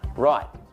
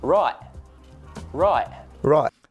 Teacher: You notice that the T has disappeared from the end of the word. Right. Yeah, we kind of tap it on there. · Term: glottal stop